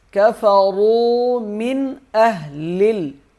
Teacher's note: من پہ غنہ نہیں کریں گے، نون ساکن ہے، اور نون ساکن کے آگے حروف حلقی کا حرف ہے حمزہ، اس لیے یہاں پر غنہ نہیں کیا جائے گا